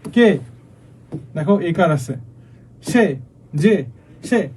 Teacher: একাক্ষর মানে একটা অক্ষর বিশিষ্ট সর্বনামের ক্ষেত্রে কি হয়, এ সংবৃত হয় মানে স্বাভাবিক উচ্চারণ হয়।